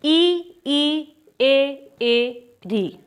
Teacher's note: इन सभी स्वरों के उच्चारण में जो हमारी जीव की स्थिति है लगभग एक जैसी है तो यह जीव के अगले हिस्से से बोले जा रहे हैं इसीलिए यह क्या है यह सारे के सारे अग्र स्वर हैं